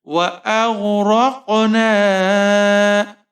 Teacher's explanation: را کے اوپر زبر ہے، را کو موٹا پڑھیں گے، قاف ساکن ہے، یہاں پر قلقلہ کریں گے قاف پر